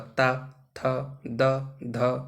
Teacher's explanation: अब ता बोलेंगे तो हमारे दंतों का प्रयोग होगा, दांतों का